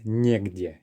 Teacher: We have a letter ye, and the stress is on that first syllable.